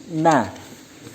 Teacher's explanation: bertempat pada ujung lidah mengenai gusi gigi depan atas dan rongga pangkal hidung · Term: Nun